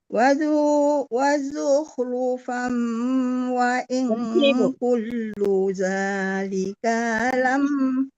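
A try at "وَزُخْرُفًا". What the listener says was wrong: Wazukhrufa, ada wakaf berhenti di situ ya Bu, ada wakaf seperti qala atau jim kecil itu berhenti deh. Wazukhrufa baru langsung.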